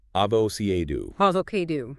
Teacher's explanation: The energy has to be on that second syllable.